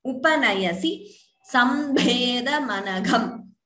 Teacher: Bha and gha are mahapranas.